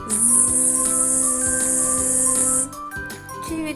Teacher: разом відкрийте губки так щоб вийшов звук [музика] зшиваєте ви малята як дзвенить ваше горло як воно вібрує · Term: звук з